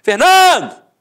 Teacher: Então você mata que a penúltima sílaba é a sílaba tônica, portanto é uma paroxítona terminada em o. Tanto é que Fernando não tem acento.